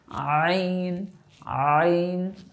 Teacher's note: হলকের মধ্য থেকে একটু গলার চাপের সাথে উচ্চারণ হবে